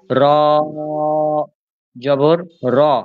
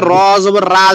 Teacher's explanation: হ্যাঁ, এটা খেয়াল করতে, র জবর রা যেন না বলে ফেলি, ঠিক আছে? রটা জবর হলে বা পেশ হলে মোটাই থাকবে, র কখনো র জবর রা হবে না